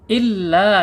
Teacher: Jadi mad jaiz munfasil antara illa dan ayah terpisah ya. Illa 4 sampai 5 harakat.